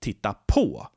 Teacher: the particle gets stressed here not the main verb but the particle